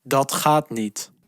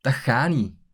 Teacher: Notice that the final t of each word can be dropped in Flemish speech.